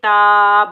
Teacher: تا کے اوپر کھڑا زبر ایک الف کی مقدار میں کھینچ کر ادا کریں گے